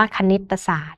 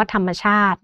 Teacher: เวลาเราอ่านออกเสียงก็จะมีเสียงอะที่เชื่อมเสียงอยู่ระหว่างคำทั้ง2คำนะคะ